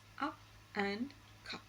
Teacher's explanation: described as a central unrounded vowel just above open position, and it occurs initially medially in the words up and cup.